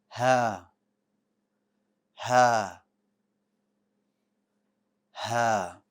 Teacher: The letter ha is light. It means the back of your tongue is going to stay flat. And another thing about ha, which is noticeable, is that it does have air.